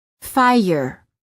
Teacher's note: There is a slight sound that is added after certain vowels, making it sound almost as if the word contains an extra syllable.